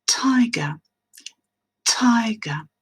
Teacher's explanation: Un tigre, en anglais, tiger, tiger. Et comme le son T est à l'initiale du mot et qu'il est dans une syllabe accentuée, on va avoir ce qu'on appelle une aspiration en prononçant ce son T